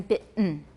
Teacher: the T in bitten is accompanied by a glottal stop